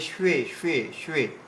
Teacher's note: শয়ের সঙ্গে ওয়া যোগ হয়ে রয়েছে, তাই শ্বে শ্বে শ্বে।